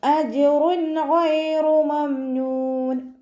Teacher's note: റോക്ക് വമ്മ തെൻവീന് വന്നു. തെൻവീനിന് ശേഷം ഇദ്ഹാറിൻ്റെ അക്ഷരമായിട്ടുള്ള ഗൈന് വന്നു. തെൻവീനിനെ വ്യക്തമാക്കി ഉച്ചരിച്ച് കൊടുക്കുക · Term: ഇദ്ഹാർ